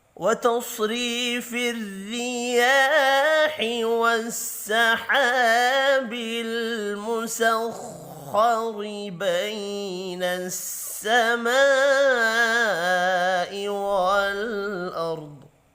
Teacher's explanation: سما الف کے اوپر بڑی مد ہے، پانچ الف کے برابر کھینچ کر پڑھیں گے۔